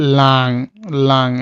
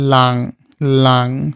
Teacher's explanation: এনজি যেটা হলো আপনার একটু নাক থেকে আসে, যেটা একটু লং, যেমন লাং, লাং, এটা অটোমেটিক আপনি দেখবেন যে সাউন্ডটা আপনার নাক থেকে চলে আসতেছে, ইংলিশে যেটা আমরা বলি লং, আর এখানে হলো লাং, লাং, তার মানে এটা নাক থেকে সাউন্ডটা চলে আসতেছে লাং।